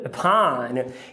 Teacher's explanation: o up faz parte de uma sílaba átona, porque entrou outra sílaba. Então aqui é um schwa, upon.